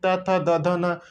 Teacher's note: त वर्ग क्या होता है दंती ये दांत से निकलते हैं किससे निकलते हैं दांत से निकलते हैं त थ द ध